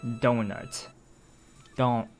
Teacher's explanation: the kind of sound you're making with it with your tongue the tip of your tongue touching the back of your teeth